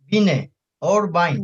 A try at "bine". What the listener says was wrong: Bine. Yeah, bine, not bind, but B. bine.